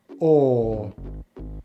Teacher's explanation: To make this diphthong sound we start with the long vowel /ɔː/, which we make by pulling the tongue into the back of the mouth, rounding the lips and the jaw is mid-open